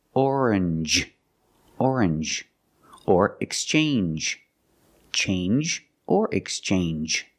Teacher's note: Usually when you see NGE, it makes the NG sound, like orange or exchange. You make the N sound, not the nasal sound, just N, and the J, like juice. J. Together, orange, orange, or exchange, change or exchange.